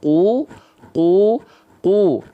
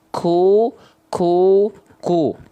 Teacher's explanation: pangkal lidahnya paling dalam kalau Kaf agak ke tengah dia keluar percikan nafas · yang membedakan antara qf dammah dengan Kaf damah kalau qf dia tidak mengalirkan nafas qu qu qu tapi kalau Kaf dia keluar percikan nafas